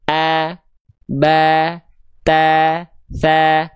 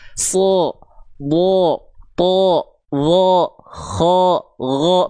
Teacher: dia tebal ya, makanya dibaca terdengar seperti vokal vokal O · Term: huruf tebal